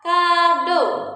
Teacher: Nah, kemudian kita punya bunyi vokal o madya atas belakang